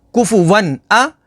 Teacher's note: تنوین کے بعد حروف حلقی ہے تو یہاں پر اظہار ہوگا, الف پر کوئی حرکت یا جزم آ جائے تو اسے حمزہ پڑھیں گے.